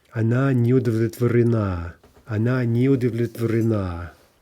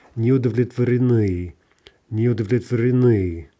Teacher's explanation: Lots of syllables before we hit that stress at the end of the word. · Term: end stress